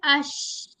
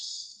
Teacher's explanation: showering sound होती है इसकी एक क्वालिटी और इसको तफशी भी कहते हैं · दरमियानी हिस्से से जीम शीन और या अदा होता है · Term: शीन का मखरज